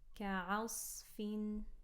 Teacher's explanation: Light kaf, light ayn, heavy sad.